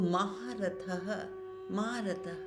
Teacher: यहां पर विसर्ग आया है तो विसर्ग की साउंड होगी ह